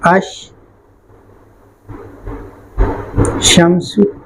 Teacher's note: آپ اس لام کو شین سے بدل دو گے، ہو جائے گا اش شمس.